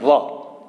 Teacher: વ છે તેનું ઉચ્ચારણ સ્થાન છે ઔષ્ઠ્ય, ઓઠ ભેગા થાય વ, બરાબર. તેને અર્ધ સ્વરો કહેવાય.